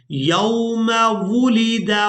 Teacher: वाव को होंठों को गोल करके अदा करते हैं।